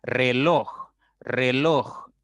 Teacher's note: Es una palabra de 2 sílabas y la mayor intensidad está en loj, en esa sílaba. Por lo tanto, ahí está la mayor fuerza al momento de pronunciar. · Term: sílaba tónica